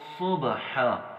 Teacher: صبحا میں ہم نے صاد کو موٹا پڑھنا ہے، با کے اوپر ہم نے قلقلہ کرنا ہے، اور حا کو سیم جو پچھلے لفظ گزرے ہیں ان کی طرح ہی پڑھنا ہے۔